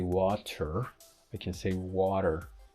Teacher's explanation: We are tapping the T or flapping the T, which is a prominent feature of North American English.